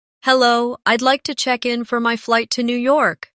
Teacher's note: Notice how checkin sounds like one smooth unit. No pause in the middle.